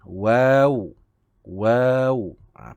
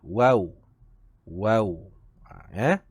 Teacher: makhrajnya iaitu kedua bibir, cuma dimuncungkan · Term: huruf waw